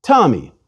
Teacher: If I say, for example, the name Tommy, I put a puff of air after the T. If I take away that puff of air, I would say Tommy. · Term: Aspirated